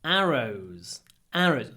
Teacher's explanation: The stress, ударение, is on the first syllable.